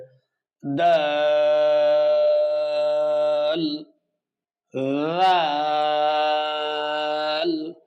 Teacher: জিহ্বার আগা সামনের উপরে দুই দাঁতের গোড়ার সাথে লাগিয়ে চার আলিফ টেনে পড়তে হবে